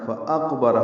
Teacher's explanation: ہو جائے گا، فاقبرہ، فقبرہ نہیں پڑھنا، فاقبرہ حمزہ بالجہر ادا ہوگا اور قاف سے ملانا ہوگا